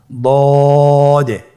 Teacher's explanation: দদের মধ্যে নুক্তা রয়েছে। দদ হারাফটি উচ্চারণ করার সময় অবশ্যই তিন আলিফ টেনে পড়তে হবে